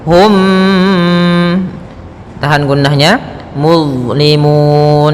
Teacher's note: Cara membacanya masukkan mimnya kepada mim setelahnya dan ditahan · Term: idgham mimi